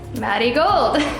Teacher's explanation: It's because in Mexico, the way that you pronounce marigold, the R sounds like a D, so Maddie Gold.